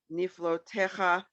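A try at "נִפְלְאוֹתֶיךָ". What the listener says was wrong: It's Nifla O Techa. This is one where a lot of people will say low. Nifla O. They'll say Niflo, and it's not.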